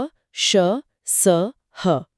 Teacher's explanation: इन्हें बोलते समय मुंह से हवा घर्षण के साथ निकलती है, जिससे हल्की गर्म हवा महसूस होती है। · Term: ऊष्म या संघर्षी